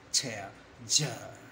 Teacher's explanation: begin with the plosive end with fricative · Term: affricate